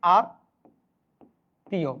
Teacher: মটা কিন্তু উচ্চারণ হচ্ছে না